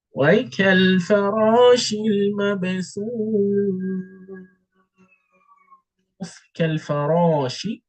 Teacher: Right, the raw is getting longer with one count.